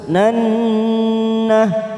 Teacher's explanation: Nannah nun yang bertasdid kita tekan 3 ketuk. Nannah bacaan gunnah.